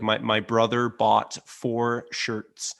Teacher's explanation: american accents have a very prominent r sound